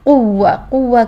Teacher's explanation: मुद्दा की शक्ल इख्तियार नहीं करेंगे इसकी कुवा कुवा करेंगे और दोनों होठों को गोलाई से ही अदा करेंगे वाव को वी की साउंड नहीं लेकर आएंगे